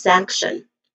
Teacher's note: First syllable is a stress syllable.